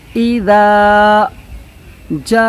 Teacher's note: اذا کہ حمزہ پر حرکت زیر کی ہے، اس وجہ سے جلدی پڑھیں گے۔ پھر دال الف زبر دا، یہ الف مدہ ہے تو کھینچ کر